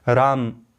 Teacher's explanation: जब मैंने राम बोला तो म में स्थित जो अ है, ह्रस्व अ है, वही क्या है, मात्रा है, एक मात्रा है